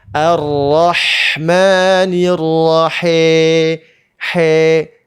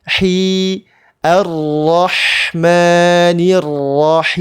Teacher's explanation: Harakatnya jangan miring ke E tapi I.